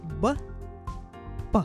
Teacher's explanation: Различаются эти звуки только участием голоса. Такие звуки образуют пары по глухости звонкости, и их называют парными.